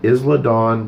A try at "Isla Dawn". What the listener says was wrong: And I apologize for the correction, but it's Isla Dawn. The S is silent.